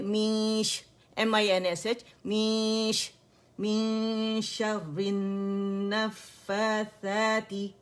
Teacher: شین کی وجہ سے نون چھپ رہا ہے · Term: اخفا